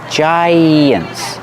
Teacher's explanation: Use the y sound to link the vowels.